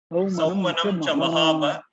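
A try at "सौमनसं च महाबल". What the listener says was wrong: No, Mahaba is wrong, right? Let me see. The typo there. No, which is the sloka 16. Saumanam cha mahabala. La is missing there. Saumanam cha mahabala.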